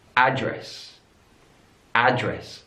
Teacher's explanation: address stresses on the last syllable in American English address address stress is on the first syllable